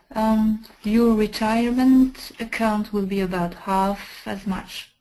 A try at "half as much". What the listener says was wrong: And you're using a British pronunciation. The American, half as much.